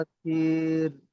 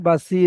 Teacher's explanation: বাসিরু নয়, বাসির, এখানে র এর উপরে সাকিন রয়েছে।